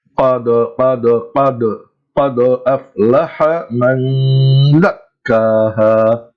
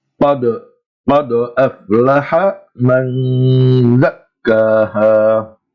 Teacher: So what we have to remember is whenever qaf, ta, ba, jim, or dal takes a sukoon while they are in the middle of a word or at the middle of a sentence, we pronounce the qalqalah sound in a light echoing manner. It's very light. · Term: light qalqalah